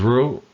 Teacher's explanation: But the word is ru, high tone.